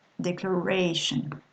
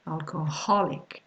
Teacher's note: the stress is set on the syllable just before the suffix